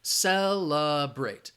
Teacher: celebrate, second syllable has the schwa